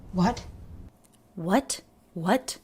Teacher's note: She does a light true T release at the end. That's a little uncommon.